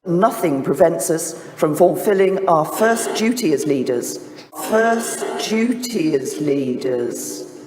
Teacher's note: This change from d to j is called yod coalescence.